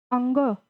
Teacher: तो ये जो इसको कैसे च ट ड ण तो ये जो है जो अंग इसको हम कंठ से और नासिक्य से यानी जब हम अंग बोलते हैं तो हमारी जो आवाज है वह नाक से भी आती है क्योंकि वहां पर यह अनुस्वार लगा हुआ है और यह जो कंठ से भी हमारी क्योंकि यह क वर्ग का है यह क वर्ग का है तो जो ध्वनि है वह कंठ से भी आ रही है और उसमें एक अनुस्वार एक बिंदी लगी हुई है तो वह नाक से आती है।